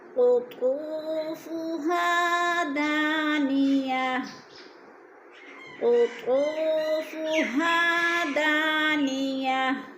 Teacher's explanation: قطو کی واو کو تھوڑا سا کھینچیں گے، اور فہا الف مدہ ہے، اس کو بھی کھینچیں گے۔ دانیہ، دا کو کھینچیں گے، الف مدہ ہے، تن کو وقف کی صورت میں ساکن کر کے پڑھیں گے۔